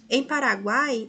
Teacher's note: há o tritongo formado pela semivogal U, pela vogal A e pela semivogal I